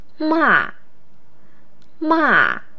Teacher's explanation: a voice that starts high and falls low.